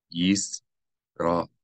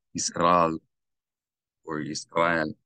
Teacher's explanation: You should not say Yisrael or Yisrael, but Yisrael. The Aleph makes a sound, an abrupt distinction between the syllables. Yisrael and not Yisrael. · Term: glottal stop